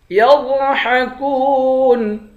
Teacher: غاد کو موٹا پڑھیں گے، کاف کو واو کے ساتھ ملا کر ایک الف کی مقدار کھینچیں گے، آخر میں نون ساکن ہے